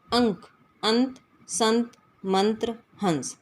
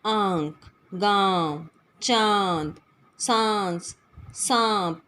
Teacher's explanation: ऐसा लगेगा कि आवाज़ मुख और नाक दोनों से आ रही है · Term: अनुनासिक